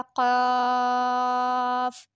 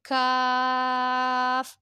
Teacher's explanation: یہ موٹا قاف ہے، یہ حلق سے نکلے گا، قاف. اور یہ حلق سے تھوڑا سا آگے سے، کاف · یہ موٹا قاف ہے اور یہ باریک کاف ہے